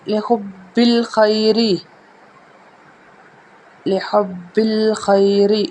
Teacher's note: را ہے اس کو ہم باریک پڑھیں گے کیونکہ را کے نیچے زیر ہے